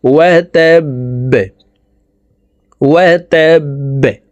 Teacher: বা যেহেতু কলকলার হরফ, নিচের দিকে ধাবিত করে ধাক্কা দিয়ে বাকে সাকিন করে ফেলতে হবে।